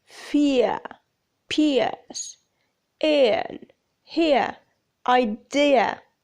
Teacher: there is a glide that begins in the position for short e moving down and back towards schwa the lips are neutral but with a small movement from spread